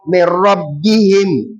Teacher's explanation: So it will not be me robbihim. So because we are not applying any Ghunnah under idgham bi ghairi Ghunnah. We only apply idgham alone, which is insertion. So here now it will be Merabbihim.